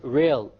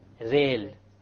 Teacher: The English R comes from the middle of the tongue, whereas the Arabic Ra comes from the tip of the tongue, along with the incisors or the gum behind the incisors